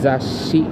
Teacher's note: Or remember, in Japanese we don't have si but only shi, shi. So you make an effort to somehow a little bit prolong that s in that shi.